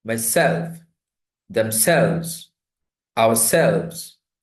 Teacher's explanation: Reflexive pronouns. The second syllable is stressed.